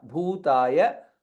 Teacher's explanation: bhu again mahaprana and ukara dirgha